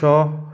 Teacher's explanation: इनको बोलने से मुंह से ऊष्मा मतलब गर्म हवा निकलती है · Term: ऊष्मीय व्यंजन